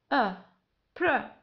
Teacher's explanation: في البداية نقول أي ثم بر. لا ننطق حرف I بل ننطق the schwa sound، أي صوت schwa. صوت schwa هو حين نقول أ بر.